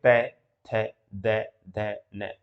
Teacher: जो जीभ है वो दांत के आकर के जो स्पर्श करती है